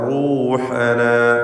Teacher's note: റൂഹനാ റാഇന് തഫ്ഖീം കൊടുക്കുക